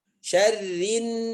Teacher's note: Sebentuk antum membaca dengan sebagaimana bacaan ikhfa, samar tidak. Ini gunnah, bukan samar ya. Syarrin, rin, masuk nun langsung.